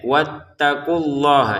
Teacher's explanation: Wattaqulah di sini wattaqu awalnya panjang tapi karena ada tasydid menjadi pendek.